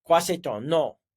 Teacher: So that M is just a little bit of air coming through your nose there. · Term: nasalized